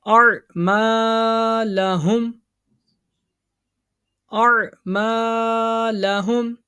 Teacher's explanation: الف سے پہلے زبر ہے نا، اس کو کھینچیں گے ایک انگلی کے مقدار کے برابر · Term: الف مد